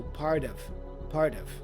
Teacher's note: the T for part again flap sound which joins with of part of part of and the vowel o for of also